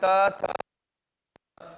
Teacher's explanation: त का उच्चारण स्थान दंत थ का उच्चारण स्थान दंत